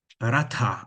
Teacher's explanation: rata en sánscrito, ¿no?, con la sorda aspirada